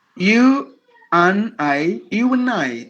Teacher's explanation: even the a is gone